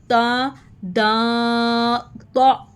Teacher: तो ता दा ता में हमने ज़ुबान की नोक को ऊपर दांतों की जड़ के साथ लगाना है, टिप ऑफ द टंग।